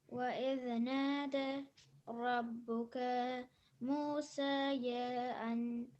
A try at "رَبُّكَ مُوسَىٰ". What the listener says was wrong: So that's the same thing with Musa. So that's not a ya either. So it's Rabbuka Musa.